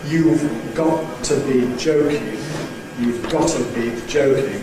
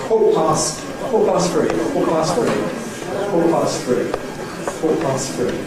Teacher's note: there seems to be a rule in London that says you can delete schwa, drop it, leave it out, after a glottal stop, before a consonant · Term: drop the schwa